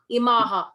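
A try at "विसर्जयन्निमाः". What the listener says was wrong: Visarjayan nimaha. Double n on the two n's there. So visarjayan nimaha.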